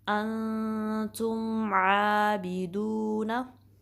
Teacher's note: मीम साकिन पे कलकला नहीं करना, आवाज़ बाउंस ना हो, यानी कि तुम आबिदून ऐसे नहीं बल्कि स्टेबल रखेंगे।